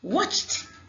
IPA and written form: wɒtʃ (Watched)